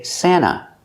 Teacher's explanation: We have NT in the middle of vowels, so we don't really hear the T.